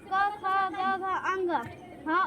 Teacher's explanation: क ख ग घ अंग ह और विसर्ग बोले जाते हैं कंठ से